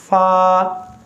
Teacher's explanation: ये हुरूफ महमूसा में से, इसमें सांस जारी होगा।